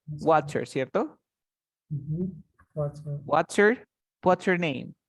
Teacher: este what's con este her se juntan